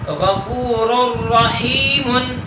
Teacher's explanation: دیکھیے کہ نون تنوین کے بعد را آیا ہے. اس وجہ سے ادھر ادغام بلا غنہ کر کے پڑھیں گے